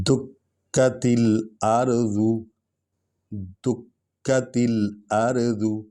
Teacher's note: کاف پر چونکہ شد ہے تو ہم نے کاف کو 2 بار پڑھنا ہے، اس لیے ہم اس کو سٹریس کر رہے ہیں، اس پر دباؤ آ رہا ہے۔